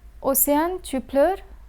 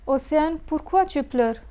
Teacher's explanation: One could turn a declarative sentence into a question by simply raising the intonation at the end of the sentence. But when the question contains the interrogative adverb pourquoi, one does not need to emphasize on the intonation to express interrogation. · when the question contains the interrogative adverb pourquoi, one does not need to emphasize on the intonation to express interrogation. The word pourquoi functions by itself as an indicator of interrogation. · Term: rising intonation